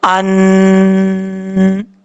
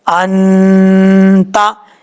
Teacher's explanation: نون ساکن اور نون تنوین کے بعد اگر حروف اخفا میں سے کوئی حرف آ جائے تو اخفا ہوگا، یعنی آواز کو ناک میں چھپا کر غنہ کریں گے، ایک الف کی مقدار پڑھیں گے